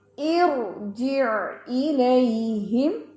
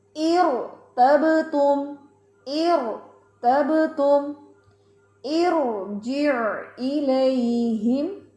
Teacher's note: را ساکن ما قبل کسرہ عارضی جب یہ آ جائے تو بھی را موٹا ہی رہتا ہے